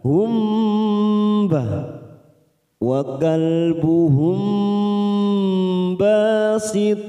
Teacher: bertemu ba biasanya mim sukun kita baca jelas namun kali ini mim sukun bertemu ba kita dengungkan selama tiga ketuk